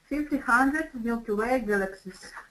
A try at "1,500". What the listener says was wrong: Now make sure you get that teen. I need to hear the teen, otherwise it sounds like 5,000. You don't want to say 5,000. 1,500. 1,500 Milky Way galaxies.